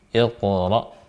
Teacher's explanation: huruf ra-nya adalah hukumnya tafkhim, hukumnya tebal